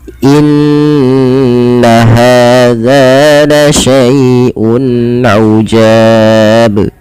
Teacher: Maka huruf yang sebelum huruf madnya adalah dia memanjangkan, yaitu huruf ja. Ja dipanjangkan. Di sini kita boleh memilih 2 harokat, boleh 4 harokat, dan boleh pula 6 harokat. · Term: mad arid disukun